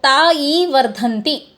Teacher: ता दीर्घ है, ई भी दीर्घ है, तो यहाँ पे पादोन मात्रा काला विवृत्ति है